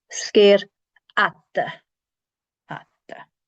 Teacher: So the FH is not pronounced, and the D, you just want to stick your tongue against your teeth for a split second